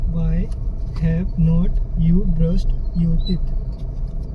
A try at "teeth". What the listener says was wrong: टिथ नहीं है, टीथ है।